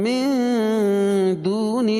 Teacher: اخفاء حقیقی کیونکہ نون ساکن کے بعد حروف اخفاء کے 15 حرفوں میں سے دال ہے تو یہاں ناک میں آواز کو چھپا کر پڑھیں گے